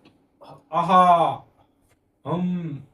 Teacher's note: पुढचा प्रश्न बघा विसर्गाचा उच्चार कोणत्या वर्णासारखा होतो आपण बघतो आहा याचा उच्चार करताना आपण ना हवा बाहेर टाकतो हवा आणि हवा ही ह च्या स्वरूपात बाहेर पडते म्हणून विसर्गाचा उच्चार कसा